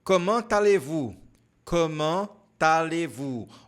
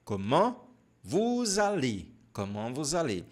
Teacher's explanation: aqui nós temos uma ligação, você vai ter que pronunciar o T